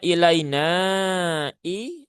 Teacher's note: Nah, ini hukumnya adalah mad jaiz munfasil. Mad jaiz munfasil itu dibaca empat atau lima harakat ya.